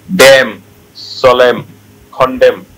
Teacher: এনটা নাই, এনটা সাইলেন্ট হয়ে যায়